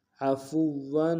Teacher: کریں گے کان عفوا عفوا، عین گہرے سے ادا کریں گے، فا کو واو کے سامنے آئیں گے، واو کو اوپر تشدید زور دیں گے